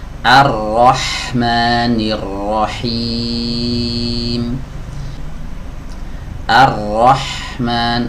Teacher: Ar-Rahman, hati-hati jangan Ar-Rahman ya, tapi a dibaca tipis, ro dibaca tebal